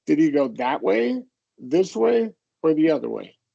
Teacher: You're going to go up for each choice, and except for the last one, you're going to go down. So if there's two choices, you're going to go up for the first one, down for the second one. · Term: choice question